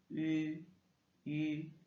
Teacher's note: Et le I, ça fait I. Le U, le U tréma qu'on a, c'est un I avec les lèvres arrondies